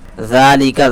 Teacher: عنہ، صرف ہا بچے گا تو عنہ پڑھیں گے. ذالک، ذال کے اوپر کھڑا زبر ہے، تھوڑا سا کھینچ کر پڑھیں گے. لام زیر لی، کاف زبر کر، لام زیر لی، یہ حرکات میں سے ہیں، جلدی سے ادا کریں گے.